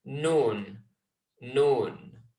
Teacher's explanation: It's very similar to the letter N in English. You've got the tip of the tongue touching where the teeth and the hard part of the roof of your mouth meet